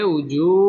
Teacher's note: ওয়াও ঠোঁট গোল করিয়া পড়তে হবে